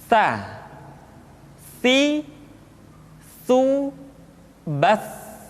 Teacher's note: Ta dikeluarkan dengan menyentuhkan ujung lidah kita dengan dinding dua gigi seri bagian atas. Diucapkan dengan suara dan nafas yang terdengar mengalir.